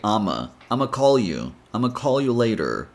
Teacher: So you get I'm gonna call you. Or you can eliminate the N sound and simply say I'ma call you.